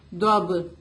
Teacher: با پہ قلقلہ ہوگا